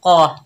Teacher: कौफ के ऊपर ज़बर बगैर खींचे पढ़ेंगे, कौफ मोटा हरूफ है